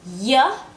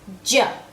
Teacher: clear distinction so one is y and the other is J in the J sound my tongue is touching the top of my mouth to make the J sound